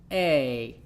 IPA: ae